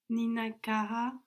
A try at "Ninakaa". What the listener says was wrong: Ka. You don't have to break the syllables. Ka.